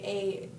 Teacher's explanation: when you say A, the sound comes from more towards the front